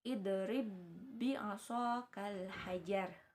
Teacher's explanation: jadi huruf yang pertamanya itu dileburkan ya atau ditasydidkan ke huruf yang selanjutnya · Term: idgham mutamatsilain